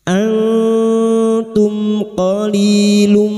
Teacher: Mim sukun bertemu qof idhar syafawi. Mim sukun dibaca jelas tanpa mendengung. · nun sukun dibaca samar dan mendengung selama tiga harakat. Ikfa hakiki. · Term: idhar safawi